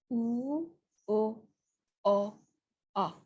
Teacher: is relatively flat super uh uh right in the back vowel that's when your mouth is rounded a little bit when the mouth is rounded your tongue is pushed to the back